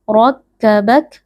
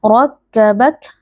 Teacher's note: wajib muttasil dibaca panjang empat atau Li harakat rabak huruf ro huruf tafim atau huruf tebal karena RO di sini berharakat fathah dibaca dengan mengangkat pangkal lidah